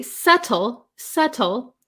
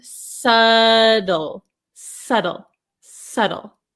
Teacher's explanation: In American English, this T becomes a flap T. So a flap T is when the T comes between a vowel sound and usually another vowel sound, or we have the dark L sound.